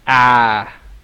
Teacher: that vowel sound is the biggest, most open vowel sound in English. So you have to open your mouth very big